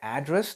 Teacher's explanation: when you say address the stress goes on to its second syllable